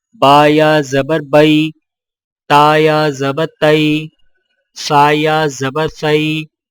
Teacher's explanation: اور یائے لین میں ہونٹوں کو اوپر کی طرف کھولنے کے فوراً بعد نیچے کی طرف جھکا کر نرمی سے بغیر کھینچے پڑھیں